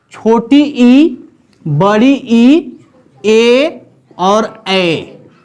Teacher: यानी कि वैसे स्वर जिनके उच्चारण में, वैसे स्वर जिनके उच्चारण में जीभ का अगला हिस्सा प्रभावी हो, ऊपर उठे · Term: अग्र स्वर